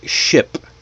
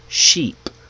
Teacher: English has words that kind of come in pairs like ship and sheep, bit and beat, full and fool. Now, the only difference between each word is the vowel length. Short versus long.